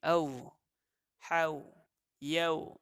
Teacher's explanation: Di sini ada hukum madlin, iaitu waw mati yang mana sebelumnya ialah huruf yang berbaris atas, maka terjadinya bunyi lembut di sini. Au, hau, yau, itu semua bunyi lembut.